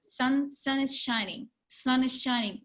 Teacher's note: попробуйте, чтобы в sun в N уперся в альвеолы. Sun is shining.